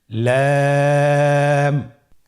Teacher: লাম হরফটি উচ্চারণের ক্ষেত্রে অবশ্যই বারিক হবে এবং 3 আলিফ টেনে পড়তে হবে।